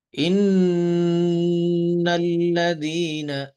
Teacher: ان یہ غنہ ہے، ہماری آواز ناک میں جا رہی ہے اور آواز کو ناک میں ایک الف کے برابر ہم نے ٹھہرانا ہے